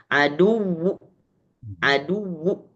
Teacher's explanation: Jadi dibaca harokatnya tapi setengah atau sepertiga harokat. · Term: raum